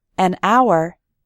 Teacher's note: a hat because hat starts with an H H sound but in the word hour the H is silent